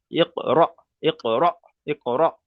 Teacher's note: হামজা সাকিন আসলে সে হামজা সাকিনকে একটু ধাক্কা কিংবা ঝাটকা, একটু প্রেসার দিয়ে পড়তে হবে।